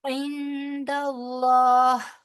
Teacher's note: عند اللہ، دال کے اوپر زبر ہے اور آگے اس میں جلالہ ہے، لہٰذا اس میں جلالہ کا لام یہاں پر پور پڑا جائے گا. لام کی کھڑی زبر پڑی جائے گی 2 حرف برابر